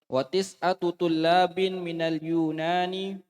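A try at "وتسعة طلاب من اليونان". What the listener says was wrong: Kalau habis gimana intonasinya? Titik nih, titik. Coba rubah. Sudah titik masih begitu intonasinya ya dirubah.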